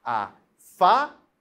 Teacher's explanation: A sílaba tônica é a penúltima, é o Fá, e ela termina em L.